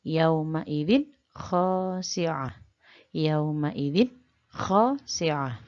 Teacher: ketika membaca idzin, tidak boleh mendengung